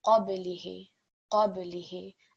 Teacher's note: The next point over here, again, we have a ba, and we know that ba is one of those letters which we will vibrate when it's carrying the sukoon · remembering the qaf will be read in a thick manner